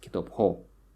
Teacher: the stress falls on the suffix